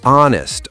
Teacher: Honest also starts with a vowel sound, because the H is silent. So, an honest person.